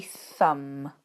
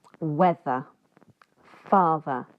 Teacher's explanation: So if you put your hand on your neck near your throat, if you say thumb, you shouldn't be able to feel anything. If you say weather and father, you should be able to feel a small vibration. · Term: th sound